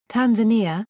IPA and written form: ˌtænzəˈniːə (Tanzania)